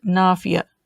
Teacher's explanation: it's got that glottal stop at the end